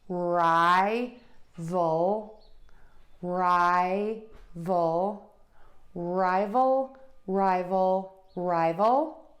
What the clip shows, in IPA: ˈraɪvəl